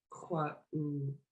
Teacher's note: a glottal stop in between